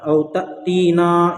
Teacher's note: तअतीना हमज़ा के ऊपर जज़्म है, इसलिए हमज़ा साकिना हुआ। हमज़ा साकिना को पढ़ने में झटका होता है। · औ तअतीना, यहाँ पर हुरूफ़ मद्दा के बाद हमज़ा दूसरे कलीमे में से मद्द मुनफ़सिल होगा। मद्द मुनफ़सिल को 3 अलिफ के बराबर खींच कर पढ़ेंगे।